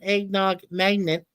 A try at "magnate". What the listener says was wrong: Magnate. You said magnet. Magnet.